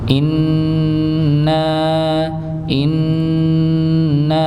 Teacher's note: hukum ghunah ngih ada hukum ghunah musyaddadah ngih maka didengungkan ya jangan langsung dipanjangkan nanya tapi didengungkan terlebih dahulu · bukan in Inna tapi in ya maka di ditahan didengungkan ya didengungkan dengan dengung yang paling sempurna